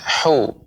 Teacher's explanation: ha kecil sehingga pengucapannya ya di tengah tenggorokan makhrajnya hu